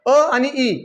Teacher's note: अ आणि ई अ चा उच्चार वेगळ्या ठिकाणी येतो आणि इ अ चा उच्चार आणि इ चा उच्चार वेगवेगळ्या ठिकाणून येतात म्हणून त्याला विजातीय स्वर मानल जात